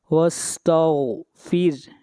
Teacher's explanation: غین حروف مستعلیہ میں سے ہے، اس لیے غین کو موٹا پڑھیں گے، وَاسْتَغْفِرْ، اور را سے پہلے زیر آ رہی ہے، اس لیے را کو باریک کر کے پڑھیں گے، وَاسْتَغْفِرْهُ، وَاسْتَغْفِرْهُ۔